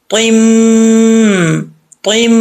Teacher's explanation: میم کے اوپر شد ہے تو ایک الف کی مقدار غنہ ہوگا